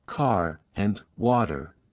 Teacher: Pronounce the R sound strongly in all positions. Rhotic accent. For example, in words like car and water, you should pronounce the R.